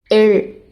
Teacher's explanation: எள் அப்படின்னு சொல்கிறப்ப வளைஞ்சு தொடாமல் கொஞ்ச நேரம் தொடரும். அப்போ காற்று நாக்கோட இரு பக்கமாக தடை இல்லாமல் வெளியேறும். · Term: தொடரொலி